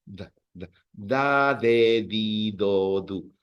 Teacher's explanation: the sound is a little bit more fricative rather than da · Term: letter D